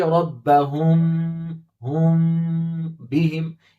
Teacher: یعنی میم ساکن کی آواز کو ناک میں چھپا کر غنہ کے ساتھ پڑھیں گے. ہم میم ظاہر کر کے نہیں پڑھیں گے. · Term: اخفاء شفوی